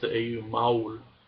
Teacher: I also lengthen the diphthongs that are there, such as the AU